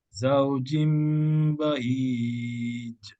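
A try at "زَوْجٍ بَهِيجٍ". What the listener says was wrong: Kalau bunyi macam tu, macam bas break tu, dia bukan qalqalah. Itu angin saja. Break angin.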